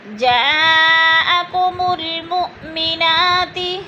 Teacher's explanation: جا پہ مد متصل، 4 الفی مد ہے، اس کو ہم نے 4 حرکات کے برابر کھینچ کر پڑھنا ہے۔ وہ حمزہ ساکن ہے، اس کو جھٹکا دے کر پڑھیں گے۔